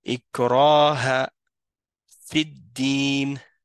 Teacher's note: il y a un alif après le ra. Hein, donc, ça prolonge le son.